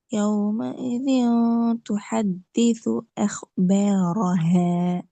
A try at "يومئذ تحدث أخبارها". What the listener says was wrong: أخبارها ر را sound மாறணும். أخبارها را.